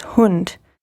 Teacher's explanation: When you have a D at the end of the word, it is pronounced like a T instead in German. They call it the final voice hardening or Auslautverhärtung in German.